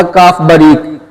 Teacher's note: زبان کی جڑ اور تالو کے سخت حصے سے ادا ہوتا ہے۔